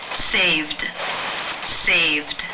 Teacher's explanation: save the final sound is the m voiced consonant sound so the e d will take the d voiced D sound ending